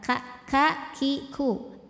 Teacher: huruf Kaf keluarnya dari pangkal lidah tapi pangkal lidah agak lebih ee depan dibandingkan dengan huruf q AF terus pangkal lidahnya enggak naik datar ka ka ki ku